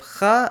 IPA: x